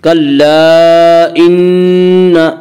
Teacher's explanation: کلا ان نون مشدد غنہ ہوگا، غنہ کی مقدار 1 الف ہے